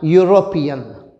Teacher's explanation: Because though the spelling starts with EU, the sound heard is of consonant Y, European. E is along with U pronounced as Y, which is a consonant sound, not a vowel sound